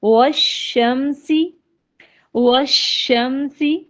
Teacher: زبان کا جو بیچ والا حصہ ہے تو سلائڈلی اٹھتا ہے اوپر کی طرف لیکن چپکتا نہیں ہے. لیکن مخرج جو ہے وہ بیچ زبان سے ہی، یعنی وسط لبان ہی اس کا مخرج ہے، یعنی وہ خالی اٹھ رہی ہے، چپک نہیں رہی. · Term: شین